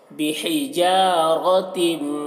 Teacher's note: यहाँ पर मीम साकिन के बाद बा है तो यहाँ पर गुन्ना के साथ में पढ़ेंगे, तरमीहिम बिहिजारतिन, हा को हलक से अदा कर रहे हैं और रॉ को पुर पढ़ रहे हैं